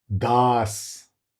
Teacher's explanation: Surnames starting with soft D that is dental, not retroflex. These are pronounced with the tongue touching the back of the upper teeth.